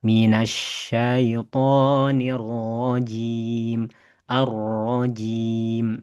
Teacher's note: huruf ro punya sifat namanya takrir, yakni adanya getaran. Ya, dan getarannya tidak boleh terlalu banyak, cukup satu getaran saja. Setelah getar langsung tarik, yakni ada di bagian ujung lidah ya, huruf ro ya.